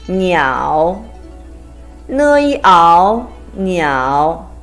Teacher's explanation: Next one is a combination of n and yao with a third tone.